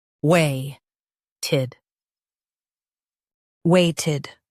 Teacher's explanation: Stress way and soften tid.